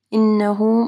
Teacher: یہاں پہ نون مشدد ہے، یہاں پہ کامل غنہ ہوگا